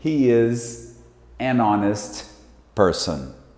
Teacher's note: esse honest não se fala o H. Ou seja, o som que nós temos aqui não é de H, é de on. E honest é som de vowel.